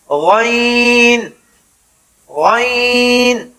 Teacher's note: غین کا مخرج ابتدائے حلق سے یعنی جہاں زبان کا اختتام ہو رہا ہے اور حلق کی ابتدا ہو رہی ہے وہاں سے غین غین۔